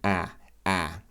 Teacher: the mouth is quite open the tongue is flat and quite spread